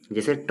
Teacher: मूर्धन्य की बात करें तो जिन व्यंजनों का उच्चारण मूर्धा से होता है, इस प्रक्रिया में जीभ मूर्धा का स्पर्श कराती है